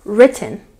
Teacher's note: The stress goes on the first syllable